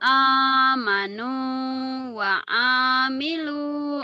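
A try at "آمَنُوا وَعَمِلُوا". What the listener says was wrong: Pendek. Amanu wa amilu gitu. Amanu, amanu wa amilu.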